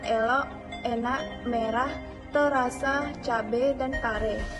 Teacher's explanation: fonem E, Vokal sedang depan tak bulat. Contohnya elok, enak, merah, terasa, cabe, dan kare.